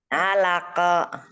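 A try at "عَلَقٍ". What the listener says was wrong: Bibirnya sedikit gitu, tapi harusnya nggak ikutan main sih itu bibir.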